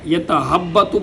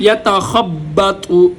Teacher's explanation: یہاں پر خا کو گلے سے، گلے کے سب سے اوپر والے حصے سے ادا کیا جائے گا